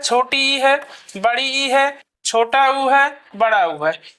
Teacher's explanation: जिस स्वर के उच्चारण में जो है मुख द्वार लगभग बंद रहता है उसे हम जो है समृद्ध स्वर कहते हैं